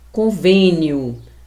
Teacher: A sílaba tônica é vem e esse E é uma vogal fechada porque eu pronuncio com a boca quase fechada, sem intensidade e sem força